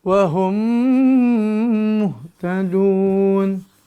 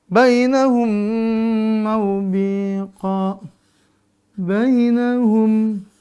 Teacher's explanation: mim ketemu mim maka dibaca dengung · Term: idgham mimi